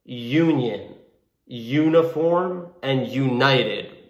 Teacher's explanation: although this is a vowel u is a vowel it has the sound of a consonant y united it has the sound of a y therefore we would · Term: y sound